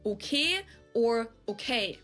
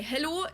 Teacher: pronounce your vowels more like just one letter just one sound straighter